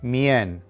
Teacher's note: The emphasis needs to be on the second to last syllable, mien, which is pronounced as two quick sounds blended together